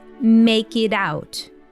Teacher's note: First of all, we have a flap T, or this D sound in the word it.